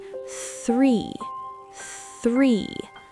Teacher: It's a breathy sound. It is not tree and it is not free. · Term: th sound